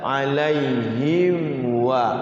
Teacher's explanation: Alaihim waladhdallin, nggak boleh ini ditahan itu, tapi jelas alaihim wa, langsung bacanya itu jelas. Jadi mimnya ini nggak boleh dengung-dengungkan.